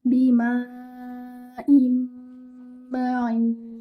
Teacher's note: You will merge the noon sakina into the meme with stretching the gunna, akmal gunna. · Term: idgham